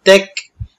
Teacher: কাফ উচ্চারণের সময় সামান্য বাতাস থাকতে হবে এটাকে হামস বলা হয় সিফাত ইনশাআল্লাহ শিখাবো আপনাদেরকে যাল ইয়াজিদ ফি